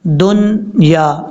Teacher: نون پہ قلقلہ نہیں کرنا، دنیا یہاں پہ اظہار کرنا یعنی نون کو ظاہر کر کے پڑھنا ہے